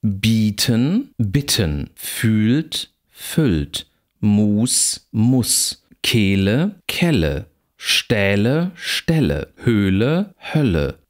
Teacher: Jeweils lang und kurz, gepaart mit, gespannt und ungespannt. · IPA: bi:tən bɪtən fy:lt fʏlt mu:s mʊs ke:lə kɛlə ʃtɛ:lə ʃtɛlə hø:lə hœlə